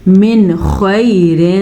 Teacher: وَمَا يَفْعَلُوا عین کے مخرج کا دھیان رکھیں. من خیر، نون ساکن کے بعد خوا ہے جو کہ حروف ہلکی میں سے ہے، تو نون ساکن کو ہم ظاہر کر کے پڑھیں گے